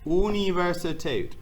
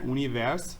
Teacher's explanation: But this is pronounced here, Universität. And notice that R sound in there, univers, is really small.